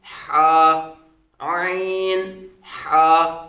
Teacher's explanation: یہ حلق کے درمیان والے حصے سے ادا ہوتے ہیں۔